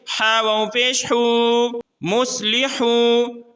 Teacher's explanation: یہاں واو مدہ ہے، واو ساکن ہے اور اس سے پہلے پیش ہے، تو اس کو بھی ہم ایک الف کے مقدار کھینچیں گے۔